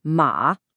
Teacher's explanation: A good way to think about it in English is when you give a command like stop or no, that sharp downward chop in your voice is exactly the energy you need for the fourth tone